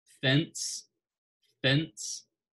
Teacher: we make that F sound with our, you know, our teeth and our lip, right? It looks kind of funny whenever you stop to just make that sound, but that's fence, fence.